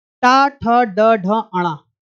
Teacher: टा वर्ग के जितने भी व्यंजन हैं उनका उच्चारण स्थान कहां से होगा? मूर्धन्य से।